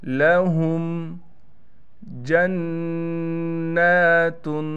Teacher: नून पर कड़ा ज़बर होने की वजह से ठहराव करने के साथ गुन्ना किया जाएगा